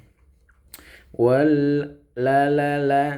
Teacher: makhraj huruf lam itu ujung lidah bagian bawah dikit menempel ya langit-langit mulut di atas kita ya, langit-langit mulut ya.